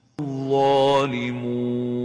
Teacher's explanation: avoid nasalization when pronouncing the waw and make sure you pronounce it without gunna